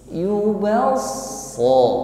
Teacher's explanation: ketika mengucapkannya maka diiringi dengan pangkal lidah yang terangkat sehingga suara yang keluar ini tebal. Yubasso diiringi dengan lidah bagian pangkal yang naik sehingga suaranya juga naik sehingga bunyi yang keluar ini tebal. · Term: isti'la